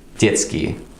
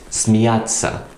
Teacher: in a word like детский, the t sound is quite short. Meanwhile, in a word like смеяться, the t is quite long, it's quite emphasized.